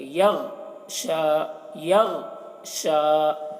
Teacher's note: غین کو موٹا کر کے پڑھنا ہے اور قلقلہ نہ ہونے پائے اس کا خیال رکھنا ہے، یعنی یغ اس طرح سے نہیں بولنا ہے بلکہ یغ شا، یغ شا، یہ شین ہے، شا، شین کھڑا جبا شا، یہاں پر یا کو نہیں پڑھیں گے، وقف کریں گے تو یا کو نہیں پڑھیں گے، شین کھڑا جبر شا اس طریقے سے پڑھیں گے۔